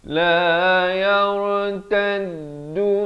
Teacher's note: Ya bari kasrah bertemu ra bunyi yar. Ra-nya dibaca tebal di sini.